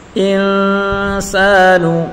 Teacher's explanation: سین الف زبر سا الف مدہ ہے، اس کو ایک الف کی مقدار کھینچ کر پڑھیں گے